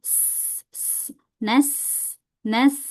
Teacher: Huruf sin sifatnya rokhawah. Rokhawah itu mengalir dan sofir. Sofir itu adalah berdesis.